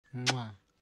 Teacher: backward movement of the two lips that accounts for the suction. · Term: bilabial click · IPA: ʘ